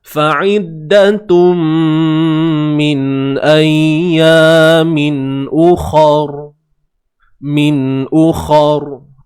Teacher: hamzah baris hadapan u. Kha tebal selamanya.